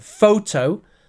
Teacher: in the word photo, the first part is said strong, so it has stress